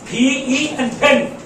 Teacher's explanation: P-E, দুই ঠোঁট দেখেন, আমি ঠোঁটে গিয়ে দুইটা ঠোঁট বন্ধ করে বাতাস বের করে বলেন